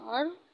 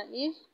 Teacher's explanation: रा साकिन से पहले ज़बर है, इसको भी हम पुर पढ़ेंगे।